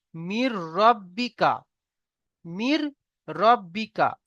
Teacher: নুন সাকিনকে র সঙ্গে মিলিয়ে বিনা গুন্নায় জাহির করে পড়তে হবে